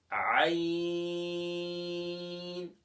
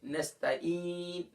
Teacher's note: ناظرین کرام یہ تھروٹ لیٹر حروف حلقیہ کہلاتے ہیں، اور عین وسط حلق سے ادا کرتے ہیں